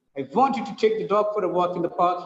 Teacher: 5 times the voice raises up, the rhythm goes up and comes down.